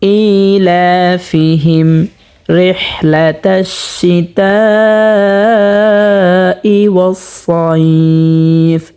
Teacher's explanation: মিম সাকিনে বামে বা মিম ছাড়া র আসছে, তো এখানে গুন্না ছাড়া পড়ব।